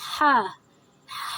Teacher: ہا کی ادائیگی کے لیے ہم سانس کی نالی سے زور لگا کر پڑھتے ہیں حلق سے